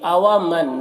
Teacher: نون میں اخفا ہوگا، نون کی آواز کو ناک میں چھپا کر پڑھیں گے